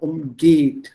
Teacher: So umgeht, stresses on the second syllable